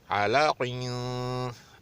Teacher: आइन पतला, लाम भी पतला और काफ मोटा